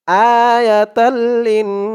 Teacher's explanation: দিয়ে যখন এই তাশদি ওয়ালা নুন ধরবে তখন ওয়াজিব গুন্না হবে এক আলিফ পরিমাণ গুন্নাহ করে পড়তে হবে